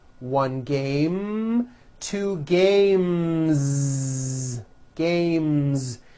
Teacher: sound M which is a voiced consonant so because of that when you add an S the S should also be voiced